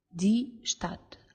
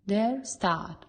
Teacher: die Stadt avec un bref, der Staat avec un long